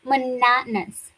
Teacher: And the o us at the end gets reduced.